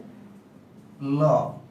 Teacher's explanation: যেহেতু পাশ দিয়ে বাতাস বের হয়, তাই একে পার্শ্বিক ধ্বনি বলা যায়। · জিহ্বা আটকে যাচ্ছে এবং দুই পাশ দিয়ে বাতাস বের হচ্ছে বা এক পাশ দিয়ে বাতাস বের হচ্ছে। যেহেতু পাশ দিয়ে বের হচ্ছে তাই এটা পার্শ্বিক ধ্বনি।